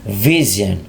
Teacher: gigi atas nempel bibir bawah, jangan lupa ada stressing nih, ada penekanan di huruf V-nya. Vision, not vision, but vision.